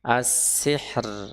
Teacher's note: Di sini huruf ro sukun karena wakaf. Di sebelumnya huruf sukun ya, ha sukun. Sebelumnya kasrah maka dia dibaca tipis